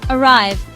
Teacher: It is a 2-syllable word. Stress is on the second syllable.